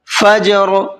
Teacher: یہاں پر جیم کے اندر بھی قلقلہ کریں گے